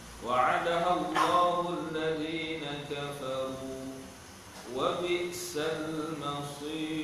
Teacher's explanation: ra dibaca dengan menipis sebab dia mengambil baris huruf yang sebelumnya